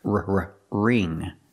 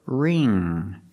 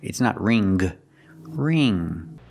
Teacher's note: So together, wring. And the NG makes the nasal sound. Mm-mm-mm. There's no G sound. It's not ring.